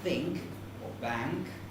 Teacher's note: Within a syllable, it must be a velar nasal. For example, in such a word as think or bank, it can't be N.